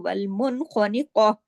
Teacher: گے تو والمن خنقہ، اس میں خواہ موٹا، قاف موٹا، اور تا مربوطہ پہ جب رکتے ہیں تو وہ ہاں میں بدل جاتی ہے ، لیکن اس میں اردو کی طرح خانقاتو نہیں پڑھا جائے